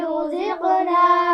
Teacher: رزقنا را کو موٹا پڑھیں گے، زا کو سیٹی کے ساتھ پڑھنا ہے